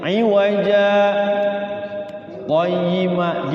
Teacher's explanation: Berhenti sejenak tanpa bernafas. 2 ketukan. Jadi cara saya diajarin itu kalau sakta itu iwaja qayyima gitu, 2 cetrekan.